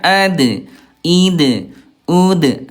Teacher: Huruf dal dia syiddah dia kuat ee mantul. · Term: qalqalah